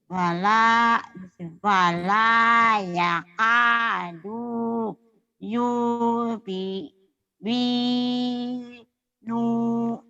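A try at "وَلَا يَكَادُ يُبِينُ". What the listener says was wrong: Ah, pinter, cuman nunya aja pendek. Tuh yang di blok. wala yakadu yubinu wala yakadu yubinu wala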